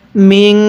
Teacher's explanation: তাহলে নুন সাকিন থেকে গুন্নাহ করে পড়তে হয়